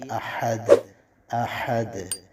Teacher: ہا اس کو آپ نے وسط حلق سے نکالنا ہے اور آواز اس میں ظاہر ہونی چاہیے